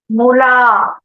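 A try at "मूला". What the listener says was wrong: வந்து முலான்னு இருக்கக்கூடாது, மூலான்னு இருக்கணும். சரியா? ஆமா தப்பு.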